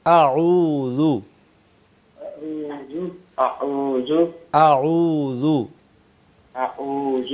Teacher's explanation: یہ جو عین ہے یہ درمیان حلق یعنی حلق کے درمیان سے ادا ہوتا ہے.